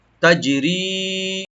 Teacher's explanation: তাটাকে open করে জিমে একটু কলকলা করবো আমরা, একটু ইকু করব